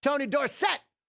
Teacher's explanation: the syllable emphasis on the second syllable